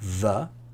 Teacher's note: And the same position of the mouth makes a similar sound, the, but this comes from your throat, your neck, and it kind of vibrates in your vocal cords. And that's called a voice sound.